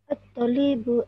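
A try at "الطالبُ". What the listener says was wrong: At-talibu. Sebab at-talibu dia ada alif tu, jadi ta tu kena panjangkan. At-talibu.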